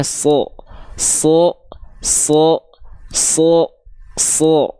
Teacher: huruf Shad itu ketika dia berharakat fathah dia dibaca sho tidak dibaca sa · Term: huruf yang tebal